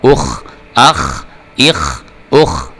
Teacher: خا کو آپ نے جب پڑھنا ہے خا کے اوپر جزم بھی ہے اور اس کو آپ نے پر کر کے پڑھنا ہوتا ہے، موٹا کر کے پڑھنا ہے ، اوپر کی طرف منہ کھول کے۔ الف پیش خا اخ،